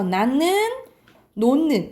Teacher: 히읗 뒤에 니은이 결합된 경우에 니은 소리가 난대